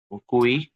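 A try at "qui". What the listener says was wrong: No no no, আমি কি কুই বলেছি? কি এর পরে ইউ সাইলেন্ট, রাইট? তাহলে আই কে কি বলি ফরাসিতে? ই বলি, তাই না? ই। তাহলে কি হবে, এটা বলে কি হবে? কি, জাস্ট কি।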